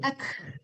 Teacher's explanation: Hamasnya itu e udara gitu. Jadi udara aja yang berbunyi, jangan kafnya dipantulkan ya. Kalau kafnya dipantulkan jadi qalqalah dia. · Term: kaf kecil